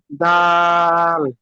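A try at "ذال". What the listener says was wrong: এটা জাল কি বলবেন? নোক্তা যখন এসে যাবে তখন দাল থাকবে না, তখন জাল হয়ে যাবে। কি হবে? জাল।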